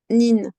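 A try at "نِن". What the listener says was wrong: parce que toi, quand tu dis ça ressemble à un S. En soi, c'est pas un S. l'air qui doit sortir.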